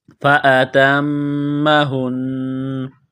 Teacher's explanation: میم مشدد ہے، غنہ کریں گے، آواز ناک میں چھپائیں گے